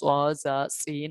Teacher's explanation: ان کو ادا کرتے وقت سیٹی ادا ہوتی ہے۔ حروف صفیریہ یعنی سیٹی والے حروف ہیں۔